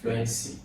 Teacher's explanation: Now, you have, first of all, there are 3 syllables here. You have fluency, and the stress is on flu.